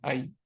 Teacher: संयुक्त वर्ण है। ये दो स्वरों को मिला के एक नया स्वर बना है आई। अ और इ को मिला के।